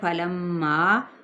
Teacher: فلما غنہ کرتے ہوئے کیا کیا ہم نے، اس کو 4 حرکت کھینچیں گے